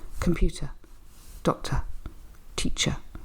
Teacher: at the end of those words they are unstressed they're very weak sounds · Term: unstressed weak syllable